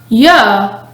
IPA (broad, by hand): y